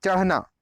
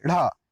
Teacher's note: उच्चारण में जीभ पहले ऊपर उठती है और फिर मूर्धन्य पर आ जाती है। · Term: उक्षिप्त व्यंजन